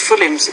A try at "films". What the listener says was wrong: It almost sounds like you're making film is. You're almost making it two syllables, but the word is film. Films, if you make it plural.